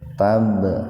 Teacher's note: Tab qalqalah sugro. Jadi huruf ba sukun mati di tengah-tengah kata. Dipantulkan, ya, dikolkolahkan sugro secara ringan.